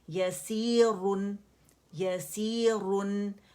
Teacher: نون باریک ہوگا اس کے را کے ساتھ اسے موٹا نہیں کریں گے